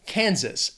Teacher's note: 2 syllables, stresses on that first syllable.